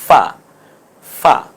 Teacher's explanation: নিচের ঠোঁটের পেট এবং সামনের দাঁত মিলে উচ্চারণ হবে ফা